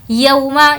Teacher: यहाँ पर खींच कर नहीं पढ़ेंगे, ये वाव लीन है